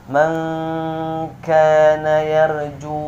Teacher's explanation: Dijelaskan nunnya kemudian tak berdengung ya.